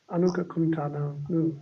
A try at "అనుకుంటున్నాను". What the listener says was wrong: నో need టు say కు టూ times